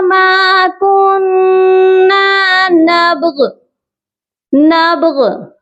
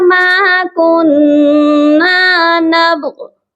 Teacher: با پر قلقلہ کرنا ہے، نبغ کر کے نہیں پڑھنا۔ بہت سے لوگ با کے اوپر حرکت دے دیتے ہیں زبر کی، جو کہ درست نہیں ہے۔